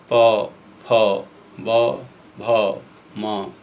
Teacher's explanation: इन ध्वनियों के उच्चारण में दोनों ओष्ठ के दोनों हिस्से आपस में स्पर्श करते हैं, जुड़ते हैं, तभी इन ध्वनियों का उच्चारण संभव हो पाता है। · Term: ओष्ठ ध्वनियाँ